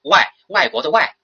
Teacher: 当这个▁a▁的后边有韵尾▁i▁u▁的时候呢，它是前▁a